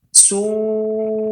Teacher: dikatakan dia mad wajib ya karena wajibnya memanjangkan dari tabiat yang 2 harakat ya, dan ini sepakat ulama qurra memanjangkannya lebih dari 2 harakat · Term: mad wajib muttasil